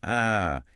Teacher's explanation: This is a ferangeal consonant, meaning it is articulated deep in the throat. It is a thick guttural sound that exists in both ancient Hebrew and Arabic. · It requires a literal constriction of the pharynx. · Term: ain, pharyngeal consonant, ayin